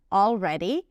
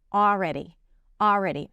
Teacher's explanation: she pronounces it with the L - 'aLready', but know that you can drop the L, it's also okay: 'aready', 'aready', if that's easier for you, if you tend to confuse the Ls and the Rs.